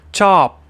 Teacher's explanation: You're putting your lips together as if you are going to go P, but you stop short of going P, but you get in the position for it. So you're saying chop, P, but with no P. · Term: glottal stop